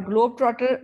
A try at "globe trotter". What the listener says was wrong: It is not glob, okay?